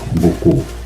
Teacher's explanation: Yang kedua ada dalam huruf B. Jadi dalam huruf B itu bibir tertutup tapi dia menghasilkan getaran di area pita suara